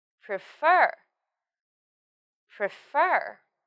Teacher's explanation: the stress of this word is on fur